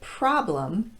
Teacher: the word problem is stressed on the first syllable and gets the pra pronunciation